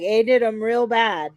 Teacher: I don't hear the TH sound in they. I don't. But I hear the vowel sound A. I do hear that.